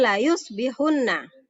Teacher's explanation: Mil ladunka, qalilim ya, qalilin, jadi kasrotanya langsung masuk ke dalam huruf lam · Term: idgham bila gunnah